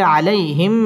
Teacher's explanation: জবরের বাম পাশে জজম ওয়ালা ইয়া লিনের হরফ তাড়াতাড়ি পড়তে হবে আলাইহিম মিম সাকিনের বামে মিম আসছে ইদগামে মিসলাইন গুন্না করে পড়তে